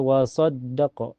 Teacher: Ini sod ditekan ke dal karena dal bertasydid.